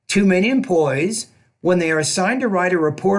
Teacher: we pause after employees. I'm separating the noun phrase from the verb phrase.